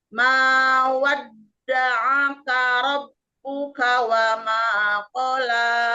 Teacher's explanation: Rob ditasdidkan dulu, tahan dulu sekitar 1 harokat Bun. Mawad tasdid juga, jangan terlalu cepat langsung ke huruf ain, jeda dulu kira-kira 1 harokat.